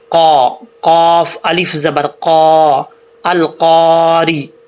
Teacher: پہلی بات تو یہ ہے کہ یہاں قاف وہ فل ماؤتھ ہے، یعنی موٹا پڑھا جائے گا۔ دو نقطوں والا قاف وہ موٹا پڑھا جاتا ہے